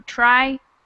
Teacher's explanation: The accent on the word triangle is in the first syllable